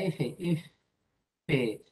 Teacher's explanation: vas a notar que el aire sale continuamente. Por eso se llaman fricativas o continuas.